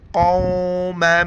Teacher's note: میم دو زبر مم، پھر مد ہے، 4 الف کی مقدار کھینچیں گے